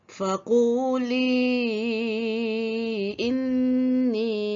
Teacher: Jadi hukum mad yang terdapat pada bacaan tersebut iaitu mad jaiz munfasil. Hendaklah dipanjangkan bacaan dengan kadar 4 atau 5 harkat.